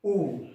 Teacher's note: पहला स्वर बोलते हैं अपन अ, होठ वृत्ताकार में नहीं आते, आ नहीं आता है, ई नहीं आता है, बड़ा ई नहीं आता है, ऊ। जैसे आप ऊ का उच्चारण करेंगे तो आपके होठों की स्थिति जो है वो गोलाकार में आ जाएगी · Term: वृत्तमुखी स्वर